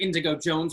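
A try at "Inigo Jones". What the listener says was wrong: Inigo. Inigo. Inigo! You said indigo. It's Inigo.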